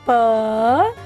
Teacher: प तो सिंपल निकल रहा है, मुंह दोनों होठों के अधर, होठ बोलते हैं अधर, अधरों को जोड़ेंगे, होठों को जोड़ेंगे और प्यार से खोलेंगे